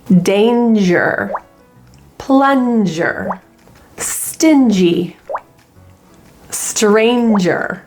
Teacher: Notice how there is no back of the tongue sound in these words.